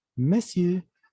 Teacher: La R no se pronuncia